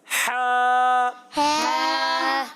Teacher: حلق کے درمیان والے حصے سے. حلق کے درمیان والے حصے سے, اور آپ کا جواب درست ہو گیا ہے.